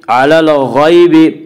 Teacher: غین کو پر پڑھیں گے، غین حروف مستعلیہ میں سے ہے۔